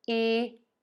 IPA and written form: ikwəˌlaɪz (EQUALIZE)